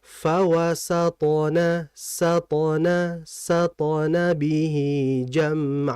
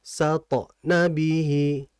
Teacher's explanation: Jangan sampai antara th dan nun ini terpisah.